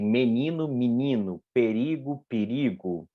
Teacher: Você tem um que a gente chama de alteamento, porque a vogal E ela é uma vogal média e a gente alteia, ela passa para uma vogal alta. Mi, a vogal O é uma vogal média, ela passa para U, que é uma vogal alta, né? · a sílaba tônica é ni, a pretônica é a sílaba antes dela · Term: vogais pretônicas